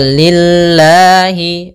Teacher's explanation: lillahiabbilamin maka amdulillahiabbilamin Kemudian pada lafal lillahi ini lamnya tipis Yaitu lafzulah didahului dengan huruf kasrah maka tipis